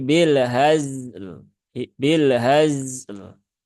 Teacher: lam sukun sudah ada ya, dia sifatnya tawasud, maka dibaca sambil jalan, jangan ditekan